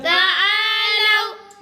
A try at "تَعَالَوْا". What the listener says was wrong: لام کے اوپر زبر ہے، لام وا زبر لو، اس کو لمبا نہیں کرنا ہے. اگر پیش ہوتا تو پھر اس نے لمبا ہونا تھا.